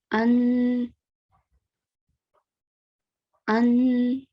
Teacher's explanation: Now here you can see we have a letter alif and it is carrying the tanween of fatha. So we have to make a nasal sound and we are going to make it for 2 seconds. So it is going to be an. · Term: fathatan